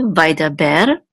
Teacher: So the accent for vai da ber is on the last syllable.